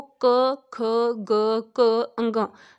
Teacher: ਇਹ ਸਾਰੀ ਧੁਨੀਆਂ ਦਾ ਉਚਾਰਨ ਜਿਹੜਾ ਉਹ ਗਲੇ ਤੋਂ ਹੁੰਦਾ ਹੈ, ਕੰਠ ਤੋਂ ਹੁੰਦਾ ਹੈ। ਇਸ ਕਰਕੇ ਇਹਨਾਂ ਧੁਨੀਆਂ ਨੂੰ ਜਿਹੜਾ ਹੈ ਉਹ ਕੰਠੀ ਧੁਨੀਆਂ ਕਿਹਾ ਜਾਂਦਾ ਹੈ।